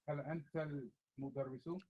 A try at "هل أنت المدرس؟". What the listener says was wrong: Don't stop in the middle. Keep it smooth.